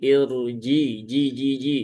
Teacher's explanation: huruf jim ini tidak punya sifat hames. Maka jangan irji, tetapi irji ji ya.